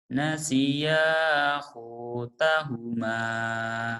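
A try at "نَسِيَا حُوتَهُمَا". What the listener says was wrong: Nah, nasiya hutahuma. ngelembutin ya. kurang lembut. Nasiya hutahuma. Kenapa kau tidak bisa lembut?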